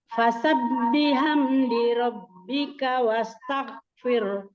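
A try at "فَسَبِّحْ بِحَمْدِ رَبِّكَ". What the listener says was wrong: Fasabbih bihamdi, Bu. Bukan fasabbihamdi, bukan, tapi fasabbih bihamdi.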